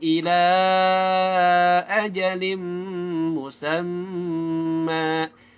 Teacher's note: ketemu mim dibaca gunnah, dan juga dia melebur. Tanda gunnahnya ini, tanwinnya tuh lihat tuh beda banget ya, tidak sejajar nih.